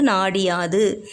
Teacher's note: உகரம் வந்து நமக்கு இகரமா மாறுது